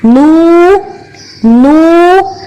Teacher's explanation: نو کے اندر جو واو ہے اس کے لیے ہم نے ہونٹوں کو گول کیا اور آواز کو پورا منہ سے باہر نکالیں گے